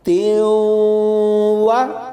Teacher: اس تا کو واو کے ساتھ ملائیں گے اور ملانے کے ساتھ ساتھ غنہ بھی کریں گے، اسے ادغام بالغنہ کہتے ہیں، یعنی ملائیں گے بھی اور غنہ بھی کریں گے۔